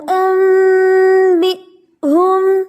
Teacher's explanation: نون کی آواز بدل جائے گی میم میں، تو نون نہیں پڑھا جائے گا، اب پڑھا جائے گا انبئونی. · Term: اقلاب